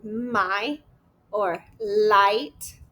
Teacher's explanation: This sounds like I, as in my, or light. So it starts with the A sound and glides to the E, like in I, right? So it makes one sound and then goes into another.